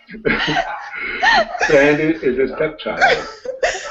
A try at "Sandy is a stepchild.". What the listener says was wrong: Good job, dogs, but your tone is completely off. It's all high. There's no dropping.